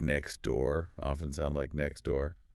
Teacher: The T just vanishes